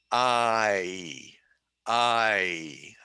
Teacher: so it starts low and goes high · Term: diphthong